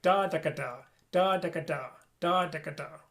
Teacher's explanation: you want the ka to kind of brush back against your alveolar ridge. Instead of pushing forward, da, ka, da, ka, da, ka, da, ka, da, ka, and it changes the way the air is moving inside of your mouth.